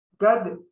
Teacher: আমরা জানি দাল হলো কলকলা হরফ এখানে আমরা কলকলা করব